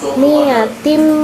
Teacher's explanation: mim gunnah sebab mimnya bertasydid dan mimnya ditekan dua tekanan